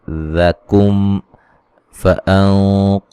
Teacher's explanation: यहाँ मीम साकिन का इदगाम है, गुन्ना करेंगे।